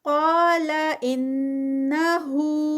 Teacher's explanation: قال انہو قا پہ ہیوی ہے اور 2 کاؤنٹس، ان غنہ آ گیا ہے، نون مشدد ہے، یہاں پر غنہ اور غنہ بھی 2 کاؤنٹس کا ہوتا ہے